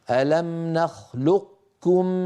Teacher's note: الادغام الناقص فيه وذلك بتبقيه صفه الاستعلاء